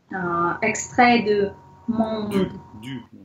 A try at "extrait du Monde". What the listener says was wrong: J'entends deux mondes. Quand vous dites, j'entends extrait deux mondes. Faut bien dire le U.